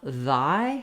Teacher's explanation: that word by itself thy has the voiced th sound so it's different